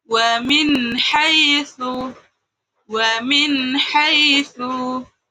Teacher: Contoh ketiga ada nun sukun bertemu ha. Nun sukunnya harus jelas dan tidak boleh berdengung. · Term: izhar kholqi